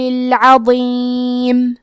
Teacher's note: کلمت العظیم میں عین کی ادائیگی حلق کے درمیان والے حصے سے ہے.